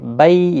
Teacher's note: بی یا لین ہے، تھوڑا نرمی کے ساتھ کھینچیں گے